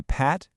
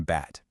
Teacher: Feel how your lips press together for a split second at the beginning of those words. That right there, that's a bilabial place of articulation.